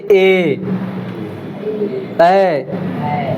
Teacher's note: मतलब इसमें दोनों चीजें, ऐ बोल रहे हैं तो इसमें कंठ भी जोर में आ रहा है और तालु भी आ रहा है। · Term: कंठ तालव्य